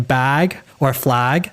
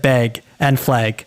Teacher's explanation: instead of saying bag or flag, she said beg and flag.